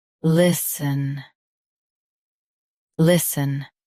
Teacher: Stress li. Keep sun soft and quick.